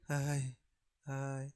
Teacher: मतलब अ और ई, अ भी पूरा नहीं और ई भी पूरी नहीं